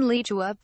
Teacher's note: In this word the initial li syllable occurs at only a mid-high pitch.